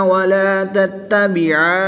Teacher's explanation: نون مشدد میں غنہ ہوتا ہے تو یہاں پر غنہ بھی کریں گے